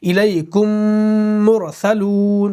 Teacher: نون اور میم کی آواز جو ہم ناک میں روکتے ہیں، ایک الف کے برابر روکتے ہیں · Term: غنہ